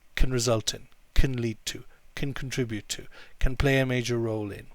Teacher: can is often pronounced as kun as well when there's another word after it